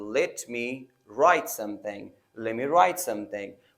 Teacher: Let me can be reduced to lemme.